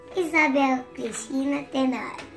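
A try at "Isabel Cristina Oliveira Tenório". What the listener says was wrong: Oliveira Tenório, né? Não esquece Oliveira, não.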